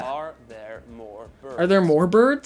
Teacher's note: notice that every time there's a letter R, it's pronounced.